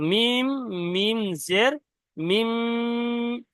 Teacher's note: তো মিম মিম জের মিম, এই যে আওয়াজটা নাকের মধ্যে ধরে রাখছি এটাইকে বলা হয় গুণনা